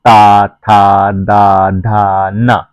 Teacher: ये ऊपर के दांतों से बोला जाता है